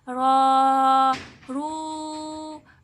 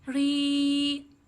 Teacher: جب را کے اوپر زبر آئے یا پیش آئے تو تب را کو پڑ یعنی موٹا پڑھا جائے گا، جب زیر آئے تب اس کو باریک پڑھا جائے گا